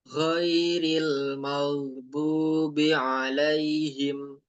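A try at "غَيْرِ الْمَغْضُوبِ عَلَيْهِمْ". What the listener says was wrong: Ini masih belum terlalu kerasa go-nya itu. Oke, getarannya masih kurang. maghbu. Ya, dia sampai bisa dipanjangkan ya. Maghdubi. Tapi tanpa putusan di situ, tanpa jeda. Maghdubi.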